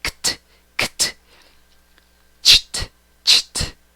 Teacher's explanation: La ed la pronuncias como T. Después de la ch sigue la T. Después de la K sigue la T.